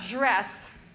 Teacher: My mouth is getting ready from the d to the r. So it's puckering up. So it sounds more like j.